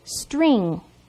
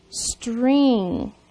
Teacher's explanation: in the word string we have three consonants STR all working together and you hardly hear the sounds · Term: three letter blends